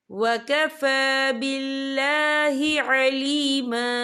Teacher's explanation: फा के ऊपर खड़ी हरकत है, तो हम इसे 2 या 3 हरकत के बराबर खींच के पढ़ेंगे